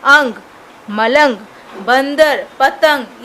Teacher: अनुस्वर आप लोग देख रहे हो, इनका उच्चारण नाक से होता है